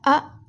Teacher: जीभ के मध्य भाग से बोले जाने वाले स्वर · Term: मध्य स्वर